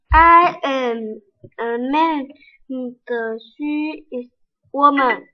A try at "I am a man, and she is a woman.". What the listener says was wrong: 差 了 一 点 ， 不 是 ， 后 面 那 半 句 没 有 出 来 。I ▁am ▁a ▁man, ▁and ▁she ▁is ▁a ▁woman. ▁I ▁am ▁a ▁man, ▁and ▁she ▁is ▁a ▁woman.